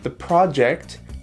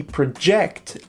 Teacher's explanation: the project the stress is on the first syllable and project the verb it's on the second syllable